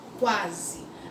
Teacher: olha, ó o U aqui, olha, perdendo a força para a vogal A